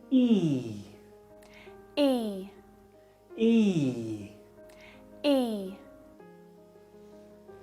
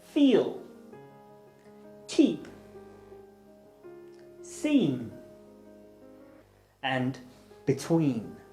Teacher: To produce the sound, put your tongue high and at the front of your mouth, stretch out your lips and make a long voiced sound